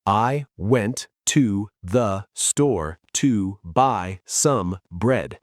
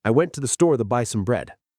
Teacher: Went, store, buy, bread. The other words, like I, to, the, to, some, are crushed. They're super fast. They're the glue that holds the mountains together.